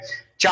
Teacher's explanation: चा को बोलते समय जीभ तालू से टकरा रही है